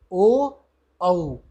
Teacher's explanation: कंठ भी और ओष्ठ भी दोनों प्रयोग होते हैं। यानी ए औ में कंठ और तालु और ओ और औ में कंठ और ओष्ठ। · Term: कंठोष्ठम